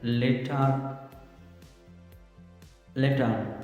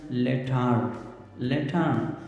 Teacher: بالکل آر کو اومیٹ کرتے ہیں، یعنی وہ آر نہیں بولتے ہیں